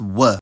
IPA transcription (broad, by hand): w